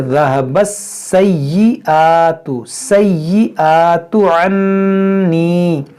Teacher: یہاں پر دیکھیں سین مشدد ہے یا مشدد ہے، اس کو دو بار پڑھیں گے،